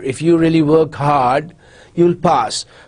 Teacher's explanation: so after hard there's a very short pause